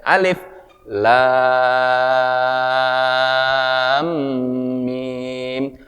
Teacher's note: Misalnya di situ lamnya panjang. Ya, mimnya panjang, berarti baca 6 harakat. Alifnya pendek.